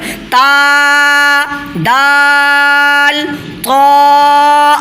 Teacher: زبان کی نوک اور سامنے والے 2 دانت کی جڑ سے مل کر تا، دال، طا ادا ہوتا ہے